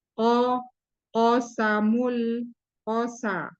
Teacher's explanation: Kemudian di sini hurufnya tebal qo ee dari segi suara dan e udara. yaitu ee jahar dan siddah tertahan udara dan tertahan suara. Jadi qo kemudian pangkal lidah naik ee istila karena huruf tebal.